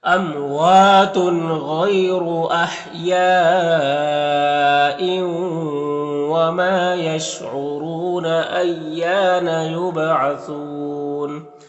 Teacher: یہاں پر وقف کی صورت میں مد عارض وقفی ہوگا